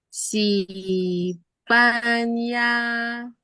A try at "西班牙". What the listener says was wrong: nada pertama Spania， sinya kurang datar. Pan 牙 西班牙。